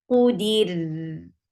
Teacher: Ra will get sifa of tawassut and it will be light when you will going to give waqf.